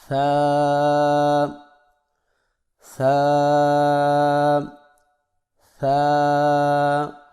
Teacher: اگلا حرف ہمارے پاس ہے ثا۔ زبان کی نوک کو سامنے والے اوپر کے 2 دانتوں کے اندرونی کناروں سے نرمی سے لگا کر باریک آواز میں اس کو پڑھیں